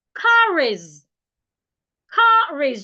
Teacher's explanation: Car is, just like you can see on the screen. The R in car moves to the vowel in is. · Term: linking R